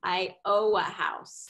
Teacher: if we don't get that N in there, it totally changes the meaning of it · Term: dropping an ending sound